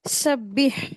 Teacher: सीन को सीटी की जैसी वॉइस के साथ अदा करेंगे। बा के ऊपर शद है तो इसको अच्छे से अदा करेंगे।